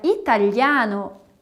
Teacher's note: No italiano, a gente não tem esse som anasalado de quando a gente fala gigante.